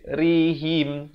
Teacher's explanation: Ri di sini tak dia baca tebal, dia baca nipis. Dan bila waqaf him, bukan him.